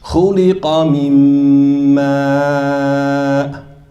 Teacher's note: It's nasal. You're not going to hear the noon, but you can hear its what? Its quality of what? Nasal. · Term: total assimilation